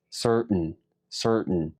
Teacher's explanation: Primero pronuncias sir, luego tu lengua la llevas al paladar, cerrando tu glotis.